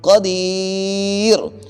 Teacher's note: اور اس کے آگے یا ساکن ہے، یہ ہے یا مدہ، تو ایک الف کی مقدار دال کو لمبا کریں گے